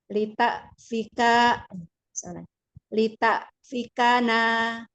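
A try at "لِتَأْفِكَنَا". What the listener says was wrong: Yuk, hamzahnya itu dari tadi ibu kurang syiddah. Maunya syiddah lagi. Iya, jangan tak, tapi tak, tak. Kurang buka, Bu. Rongga mulutnya yang kurang dibuka.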